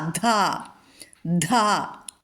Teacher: ആ മഹാപ്രാണ അക്ഷരങ്ങൾ ധ അതായത് ഘോഷാ അക്ഷരങ്ങൾ ഒന്ന് ശ്രദ്ധിക്കുകേ വേണ്ടു ദ പ്ലസ് ഹ